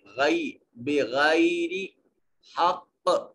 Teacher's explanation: بغائی یا ساکن ما قبل مفتوح، یا لین ہوگا، غائی غی نہیں پڑھیں گے،